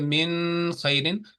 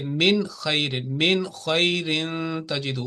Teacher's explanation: तो यहाँ पे फिर खूबसूरती के लिए ये जो है ना एक ट्रेडिशन है, चलती आ रही है कि यहाँ पे आपने नून को लंबा नहीं करना, यानी ऐसे नहीं करना कि मिन खैरिन, बल्कि बिल्कुल वाजे पढ़ के मिन खैरिन तजिदू।